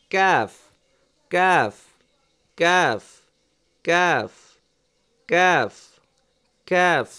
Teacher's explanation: জিহ্বার গোড়াটা উপরের তালুর সাথে লাগাইছিলাম কফ কফ আর কাফ হচ্ছে জিহবার গোড়া থেকে একটু আগে বাড়িয়ে তার বরাবর উপরের তালুর সঙ্গে লাগবে বরাবর এই এই বরাবর উপরের তালুর সাথে লাগবে ক্যাফ ক্যাফ ক্যাফ · জিহ্বার গোড়া থেকে একটু আগে বাড়িয়ে তার বরাবর উপরের তালুর সঙ্গে লাগিয়ে উচ্চারিত হয় ক্যাফ